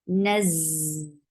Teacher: When you are attaching noon with za, there will be a buzzing sound